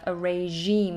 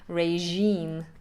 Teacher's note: Again, that uses that kind of French je sound, regime.